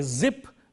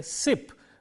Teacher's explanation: When we say zip, the z sound is voiced. When we say sip, the s sound is voiceless.